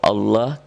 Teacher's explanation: ini masih tebel dibaca tebal berbunyi Allah karena sebelumnya berbaris di atas atau fathah